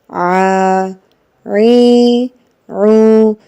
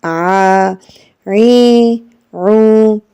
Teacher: Ain, it comes from the middle part of the throat and makes a deeper sound, and we pronounce it by putting a little stress over the middle part, the middle part, the central part of the throat.